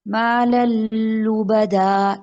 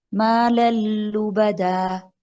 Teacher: لام اور را سے مراد بغیر غنہ. مال لبدا، نون کی ساؤنڈ نہیں آ رہی، غنہ بھی نہیں ہو رہا. مال لبدا، ہم تنوین میں جو نون ہے اس کو لام میں ٹوٹل مرج کر رہی ہیں، ادغام کر رہے ہیں، مدغم کر رہے ہیں.